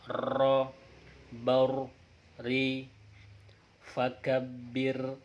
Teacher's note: Huruf ro itu selain inhiraf itu juga adalah takrir, khusus taksis. Khusus ro adalah takrir, artinya ketika kita melafalkan huruf ro seakan ro-nya itu banyak, ro, baur, ri, fakabir, seperti bergetar artinya mengulang.